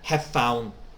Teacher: you didn't pronounce the v you connected very well